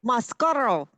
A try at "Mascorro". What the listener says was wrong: to roll your R. There you go.